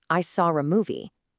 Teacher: An R sound gets added to link words even when there's no R in the spelling. So I saw a movie might sound more like I saw a movie.